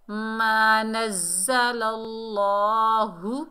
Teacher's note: اللہ، لام کے اوپر زبر ہے، آگے اللہ کا لام ہے، زبر کی وجہ سے اللہ کے لام کو موٹا پڑھیں گے